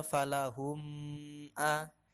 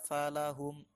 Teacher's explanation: mim sukun bertemu Alif itu harus dibaca pendek Jangan dibaca dengung jadi jangan dibaca Falah omeah tapi dibaca falahum adem sukun bertemu